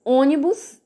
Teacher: O bus é a última sílaba, o ni é a penúltima e o o é a antepenúltima. Quando a gente fala ônibus, a parte mais forte é o o. Então, essa palavra é proparoxítona.